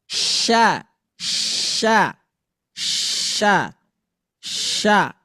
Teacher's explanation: Shin itu adalah huruf yang keluar dari tengah lidah dengan langit-langit.